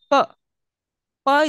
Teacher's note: I am uh trying to stop the air flow with my lips okay and I'm trying sorry I am completely stopping it and